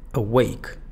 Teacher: En el caso de awake, lo fuerte está en wake. Y donde está la schwa, bajito.